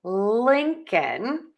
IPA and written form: ˈlɪŋkən (LINCOLN)